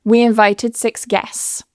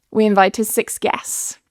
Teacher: what can happen with this sts consonant cluster at the end is we can actually remove the t in the middle